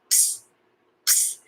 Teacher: So P and S are pronounced at the same time. So it's ps, ps.